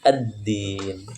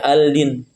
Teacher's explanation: dia melebur itu melebur ya kepada huruf setelahnya itu penjelasan ringkasnya Syamsiah alif lam melebur pada huruf setelahnya